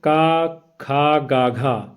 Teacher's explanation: इसका उच्चारण स्थान होगा आपका कोमल तालव्य